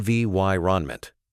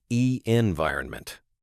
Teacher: stress the second syllable in environment on vy renment, not e environment.